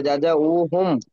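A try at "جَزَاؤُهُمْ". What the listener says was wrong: জাযাউহুম, এটা হামজা পড়তে হবে, বুঝতে পারলেন?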